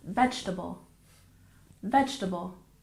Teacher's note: We tend to drop that second E sound and we stress the first syllable